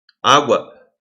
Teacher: o som do u é muito mais fraquinho do que o som do a · primeiro vem a semivogal, depois vem a vogal, no caso U é uma semivogal e A é uma vogal